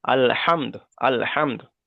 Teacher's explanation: আলা অক্ষরকে আগের অক্ষরের সঙ্গে মিলিয়ে পড়তে হয় আর আমি এখানে দালের উপরে পেশ এসছে এখানে থেমেছি সেই কারণে পেশটাকে সাকিন করে আগের অক্ষরের সঙ্গে মিলিয়ে পড়তে হবে